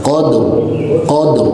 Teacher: huruf ro-nya jangan sampai dibaca tipis atau tarkik, melainkan ini wajib dibaca tafkhim, harus tebal ro-nya. Qadr ya, jadi bukan ditarik menjadi qadr.